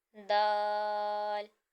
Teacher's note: जबान की नोक और ऊपर के दांतों की जड़ से अदा होगा